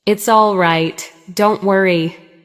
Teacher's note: A now serious tone with lower pitch.